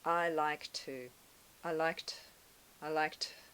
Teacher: the two sound is very short and quiet